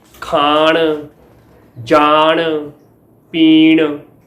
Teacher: ਅਸਲ ਵਿੱਚ ਅਜਿਹਾ ਉਦੋਂ ਵਾਪਰਦਾ ਹੈ ਜਦੋਂ ਕਿਸੇ ਨਾਸਕੀ ਵਿਅੰਜਨ ਦੇ ਪ੍ਰਭਾਵ ਕਾਰਨ ਉਸ ਤੋਂ ਪਹਿਲਾਂ ਆਉਣ ਵਾਲਾ ਸਵਰ ਨਾਸਕੀ ਹੋਵੇ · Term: ਅਰਥਹੀਣ ਨਾਸਿਕਤਾ